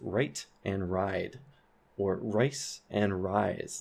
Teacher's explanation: we have this raising before voiceless consonant with the sound I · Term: Canadian raising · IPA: [rʌɪt] [raɪd] [rʌɪs] [raɪz]